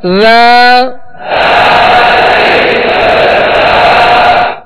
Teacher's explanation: ذال کو نرمی کے ساتھ پڑھنا ہے، اس میں سختی سیٹی کی آواز پیدا نہ ہو